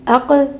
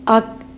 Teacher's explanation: قوف کی آواز اپنے مخرج سے پلٹ کر واپس آئی جبکہ کاف کی آواز اپنے مخرج میں رک گئی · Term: قلقلہ